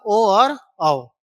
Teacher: कंठ और तालु से निकलेगा ए और ऐ। और कंठ और ओष्ठ से निकलेगा ओ और औ।